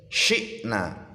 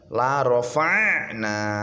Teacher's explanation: Kalau hamzah biasa dimasukkan saja, cukup ditekan pelan saja, syi'na. Kalau ain ditekan yang dalam, la rafa'na.